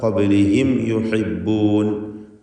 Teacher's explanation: ഖബ്ലിഹിം യുഹിബ്ബൂൻ മണിക്കാതെ വെളിവാക്കണം മീമിനെ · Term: ഇൽഹാർ ഷഫവി